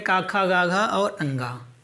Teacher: का वर्ग में का, खा, गा, घा और अंगा, इसका उच्चारण कंठ से है